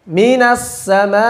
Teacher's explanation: ketika ada hamzah di akhir, sudah disinggung juga, mesti jelas dan sedikit ditekan, yakni di nabar.